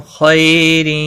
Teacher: خا مستعلیہ ہے، پر پڑا جائے گا.